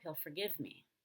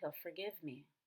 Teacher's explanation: in the word forgive we do stress the second syllable since it's a verb